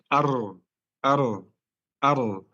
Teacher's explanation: takrar itu ujung lidah bergetar saat mengucapkan huruf itu